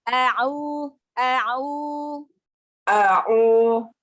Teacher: Huruf ainnya dilatih lagi ya. Jangan narik ke hidung, jangan masuk ke hidung.